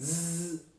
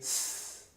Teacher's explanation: Voiced, vibrate, zzz, voiceless, do not vibrate, ss.